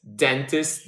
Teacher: And as you can see, the places of articulation, they go from the front of your mouth kind of like to the back of your mouth because now we're going to have the dental or alvear sounds, which pretty much is the tip of your tongue in a word such as dentist, the duh sound, the initial sound touching the back of your front teeth · the tip of your tongue in a word such as dentist, the d sound, the initial sound, touching the back of your front teeth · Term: dental or alveolar sounds